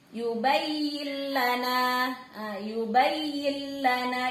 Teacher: Artinya lamnya melebur tapi tidak berdengung, gak boleh lama-lama. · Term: bila gunnah